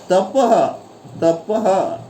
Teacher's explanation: यानी विसर्ग का उच्चार ह में होता है